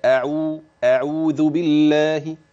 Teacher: نرقق بقى الهمزه شويه